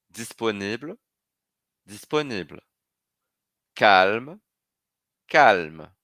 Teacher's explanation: eu já não Lia o e no masculino então não vou ler no feminino por isso que a pronúncia fica igual eu vou só até o l disponí disponí Calma calma vou